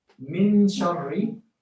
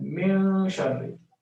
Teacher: The first one is without ikhfa, meaning with idhar, and the second is with ikhfa.